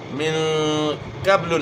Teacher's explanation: نے اخفاء کے ساتھ غنہ کرنا ہے، اور اس کے بعد قاف موٹے حروف میں سے قاف کو اپنے موٹا ادا کرنا ہے، با میں آپ نے قلقلہ کرنا ہے